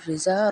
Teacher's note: را کو باریک پڑھا جائے گا کیونکہ را کے نیچے زیر ہے